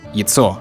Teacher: ya turns into yi if it's not stressed, so yitso. But then the plural is pronounced яйца. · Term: vowel reduction